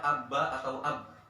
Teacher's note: kita akan mendapati suara ba gitu ya, ab keluar dari kedua bibir